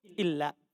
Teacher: Nun sukun ketemu lam di idgham